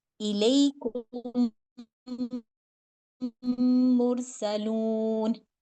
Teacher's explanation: 2 second के लिए नाक में आवाज़ जाएगी इस मीम की, लेकिन उसकी मर्जिंग पता चलनी चाहिए। यानी अब ये जो मीम है, ये एक साकिन मीम मुतहर्रिक मीम में शामिल हो गया। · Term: गुन्ना